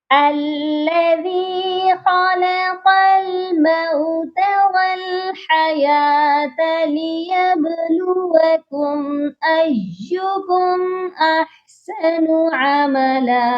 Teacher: خا بھی موٹا اور قاف بھی موٹا پڑھا جائے گا